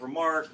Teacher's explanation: the prefix more often than not will be unstressed and then like the root word would be stressed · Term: iambic